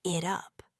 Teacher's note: the T sound at the end of it conveniently links with the U sound at the beginning of up, making it sound like it up.